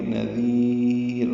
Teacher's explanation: یا ساکن کے بعد را آئی ہے، وقفاً را باریک ہوگی